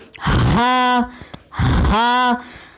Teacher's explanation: زبان کی جڑ کو حلق کی طرف دبائے بغیر باریک اور بغیر رگڑ کھاتی سانس میں پڑھیں، یعنی ہا۔ آئیے مشق کیجیے۔